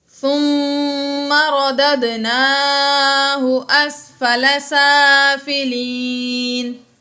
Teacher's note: فی احسن تقویم ثم رددناہ اسفل سافلین، ثم میں میم مشدد ہے اس لیے ہم نے یہاں پر غنہ کیا، اور رددناہ، ردد دال میں دال ساکن ہے حروف قلقلہ میں سے ہے تو یہاں پر ہم نے قلقلہ ظاہر کیا